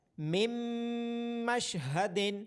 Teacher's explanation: اگلی مثال ہے من مشہد، حروف یرملون میں سے نون ساکن کے بعد میم ہے تو نون ساکن کی آواز میم میں مرج ہو رہی ہے